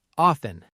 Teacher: Some learners pronounce the T clearly, off-ten, but a lot of native speakers say often with a silent T